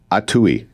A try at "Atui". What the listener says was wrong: Atui. Accent on the first syllable. In English, we tend to stress the second to the last syllable when we approach an unfamiliar word. But this is Atui, and that's from the Benaki language.